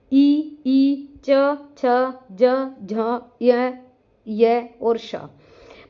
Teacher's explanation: तालव्य वर्ण जिसका हमारा उच्चारण स्थान तालु होता है।